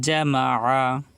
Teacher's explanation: আইন কিন্তু গলার ভিতরে যাবে, আইনটা চাপ দিয়ে বলতে হবে। কণ্ঠনালীর মাঝখান থেকে আইন উচ্চারিত হয়।